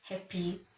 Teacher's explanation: the first syllable sounds stronger. Stress syllables are longer.